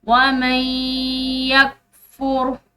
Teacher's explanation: یہاں پر نون ساکن ہے اور اس کے بعد 4 حروف یا ہو میم اور نون میں سے ایک حرف یا موجود ہے تو یہاں پر بھی ہم نے جو ہے ادغام بالغنہ کرنا ہے